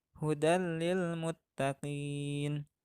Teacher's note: tanwin dibaca lebur menghadapi huruf idgham yaitu lam